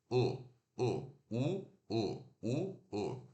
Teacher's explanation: Esse U ferradura a gente relaxa os lábios e faz o U curto.